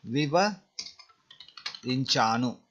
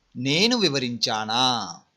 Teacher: you remove oo sound and make it long vowel ah sound